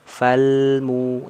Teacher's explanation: nih lam Nun Ain mim ro Nah di sini kalau ada huruf L ini ketika sukun berarti dia dialirkan tapi ya alirannya bukan bukan panjang seperti rakah hanya sedikit saja